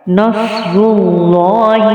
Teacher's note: صاد کو موٹا پڑھیں گے اور اللہ کے نام کو بھی پر پڑھیں گے۔ نصر اللہ، را کو بھی موٹا پڑھیں گے۔